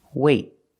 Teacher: I don't release the T. It's a stop T. I stop the air.